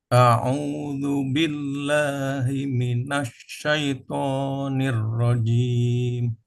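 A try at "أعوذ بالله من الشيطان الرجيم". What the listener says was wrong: Sedikit huruf lam agak sedikit tebal. Tadi saya dengarkan bila enggak. Tipiskan. A'udzu billah, bukan a'udzu billah, enggak. A'udzu billahi minasyaitonir rajim.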